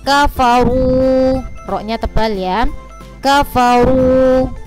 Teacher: ro-nya yang berharokat dhamma itu dibaca tebal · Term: tafkhim